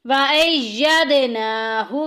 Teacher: وَأَيَّدْنَاهُ، یاد میں دال کو ہلا کے نکالیں گے، حروف کلکلا میں سے ہے، اور نون کو لمبا کریں گے کیونکہ اوپر کھڑی زبر آ گئی